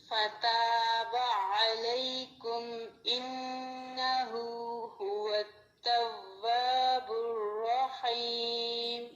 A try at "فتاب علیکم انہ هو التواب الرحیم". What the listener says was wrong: هو التواب، ابھی آپ کے ہونٹ گول نہیں اچھے سے ہوئے، اوپر والے دام نیچے والے ہونٹ پر لگے، جس کی وجہ سے آواز آئی ہے. هو التواب، توا نہیں پڑھیں گے، توا توا.